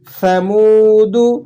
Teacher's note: کذبت ثمود، یہ سا ہے، سا کی ادائیگی کرتے وقت آپ نے ذرا سا منہ کو کھول کر اور زبان کی نوک کو اوپر والے دانتوں کے ساتھ ٹچ کرنا ہے تو یہ سا ادا ہو جائے گا۔ ثمود، دال پیش دو ہے تو آپ نے اسے کھینچنا نہیں ہے